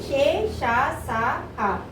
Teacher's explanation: మనం గాలి బయటికి ఎక్కువగా వదులుతున్నాం అంటే ఊది పలుకుతున్నాం కాబట్టి వీటిని ఏమంటారు అంటే ఊష్మాలు అంటారు